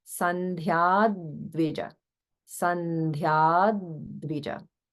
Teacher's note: notice in the middle of the line that there is holding after dirgha